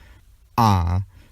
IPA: ʔ